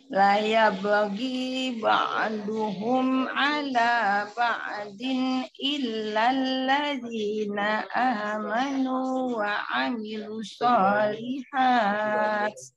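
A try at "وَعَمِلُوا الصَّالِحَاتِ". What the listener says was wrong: Wa amilu sholihat. Ada sholat tasdid. Sholat tasdid.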